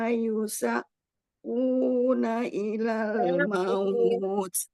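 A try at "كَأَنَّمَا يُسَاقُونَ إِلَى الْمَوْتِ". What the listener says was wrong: Tidak ada hamzah, yusa saja fathah biasa.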